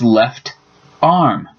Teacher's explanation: The T from left tends to jump over to the other word to make it sound like left arm, instead of a longer pause. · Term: linking